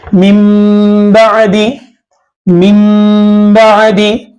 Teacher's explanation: कल्ब या इक़लाब का कायदा नून साकिन या तनवीन के बाद अगर बा आए तो नून की आवाज को मीम से बदलकर इख्फा माल गुन्ना करके पढ़ेंगे